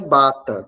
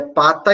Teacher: Se a gente trocar o P por B, a gente vai ter uma palavra diferente, vai mudar a palavra. E a gente está trocando somente um som vozeado por um desvozeado